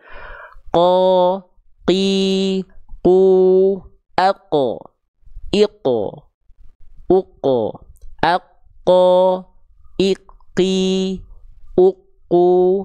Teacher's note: Pangkal lidahnya nempel ke langit-langit yang paling dalam. Langit-langit yang lunak. · huruf qaf nggak keluar percikan-percikan nafas karena nempelnya begini.